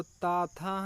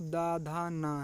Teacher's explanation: ये दांत की सहायता से बोले जाते हैं। तो इसमें अघोष जो वर्ण हैं वो ता, था हैं, सघोष जो वर्ण हैं वो दा, धा, ना है